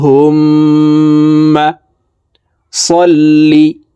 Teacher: মিমের সাথে নাকের পাশে থেকে তিন সেকেন্ড পরিমাণ গুন্নাহ করে ধরে রাখবো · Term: ওয়াজিব গুন্নাহ